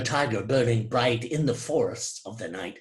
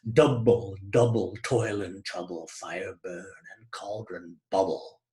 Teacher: The prevailing meter here is trochaic, stressed syllable followed by an unstressed syllable, and a repetition of that foot